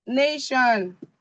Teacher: the stress falls on the penultimate syllable